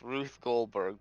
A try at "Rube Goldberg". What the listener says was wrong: Rube, not Ruth. Rube. Like Ruben, but without the N.